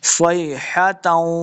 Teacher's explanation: इल्ला स्वैहतन, स्वाद को मोटा पढ़ेंगे, लम्बा बिल्कुल नहीं करना। स्वैहतन, आगे वाव हुरूफ जरमलून से आ गया तो गुन्ना करके पढ़ेंगे।